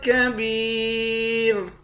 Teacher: لام دو زیر لن، یہاں اخفا ہوگا۔ کاف کو یا کے ساتھ ملا کر ایک الف کے مقدار کھینچیں گے، آخر میں را ساکن ہے